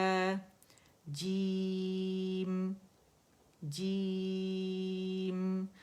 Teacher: جو میم ہے آخر میں اس کا اظہار کرنا ہے ہم نے